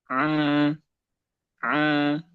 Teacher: Nah, huruf ain dan ha dia tidak masuk hidung. · Nggak boleh masuk hidung. Karena ini makhrajnya di tenggorokan.